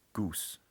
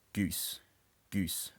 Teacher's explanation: a non-fronted goose vowel would sound something like goose, but a slightly fronted goose vowel is something like goose